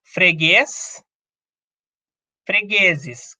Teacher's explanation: É uma palavra que tem a sílaba tônica na última posição. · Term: oxítona